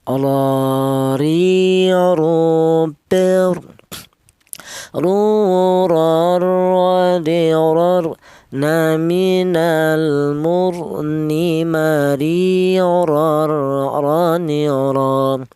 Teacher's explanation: Huruf ra ini keluarnya huruf berasal dari ujung lidah menyentuh langit-langit mulut